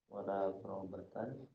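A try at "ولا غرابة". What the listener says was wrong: Gharabata jangan ditanwinkan ya.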